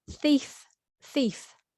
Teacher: It's a hard one because you have a th with your tongue between your teeth